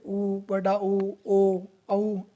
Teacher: जिन स्वरों का उच्चारण करते समय ओष्ठों का आकार वर्त की भांति गोल हो जाता है उन्हें वर्ताकार स्वर कहते हैं